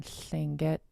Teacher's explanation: If it's on its own, like in Tlingit, just your mouth will let it be an unvoiced L.